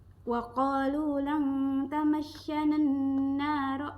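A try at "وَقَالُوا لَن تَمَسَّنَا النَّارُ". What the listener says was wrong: Itu sebenarnya bukan lang. Itu kan kalau bacanya lang itu kan berarti ng kan? Itu lan. tetap lan, cuma lidahnya nggak nempel gitu loh. Nah, jadi bukan eng itu kalau ketemunya kaf dan kof. Selain itu tetap en, cuma nggak nempel.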